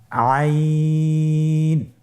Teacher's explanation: আইন হরফটি কণ্ঠনালীর মধ্যখান থেকে উচ্চারিত হয়।